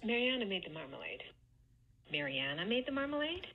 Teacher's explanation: this second to last syllable, Mariana, is the one that gets the stress, and she's attaching either a high star or a low star accent to it.